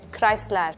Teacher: R at the end is like really pronounced.